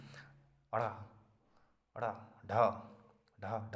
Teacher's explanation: उत्क्षिप्त का मतलब होता है जीभ लहरा के लुढ़क जाए बहुत जोरी से, अड़ा अड़ा ढा ढा ढा, जीभ बहुत तेज़ी से चले। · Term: उत्क्षिप्त व्यंजन